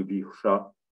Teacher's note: Et un autre Visha avec le chat, avec la pointe de la langue vers le haut, le chat qu'on appelle rétroflexe, ça se prononce donc Visha.